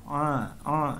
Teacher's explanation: Ain ini keluar dari kerongkongan bagian tengah